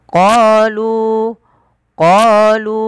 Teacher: lu 4 harokat karena dia ada bacaan mad jaiz munfasil. Mad yang terjadi apabila ada mad tabi'i, lu asalnya mad tabi'i, alif di tengah-tengah dianggap tidak ada, bertemu dengan hamzah, maka lu qalu qalu atattakhizuna.